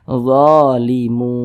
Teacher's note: huruf nun tidak dibaca panjang Makanya kita sukunkan makanya kita matikan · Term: berwakaf